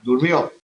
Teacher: Durmió, aguda, golpe de voz, en la última sílaba que acaba en vocal, aguda. Luego lleva tilde.